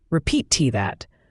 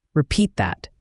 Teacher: The T at the end of repeat can sometimes be almost silent, especially when you flow into the next word. It's not repeat that, but more like repeat that.